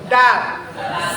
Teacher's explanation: Dal, ujung lidah ditempelin ke langit-langit atas.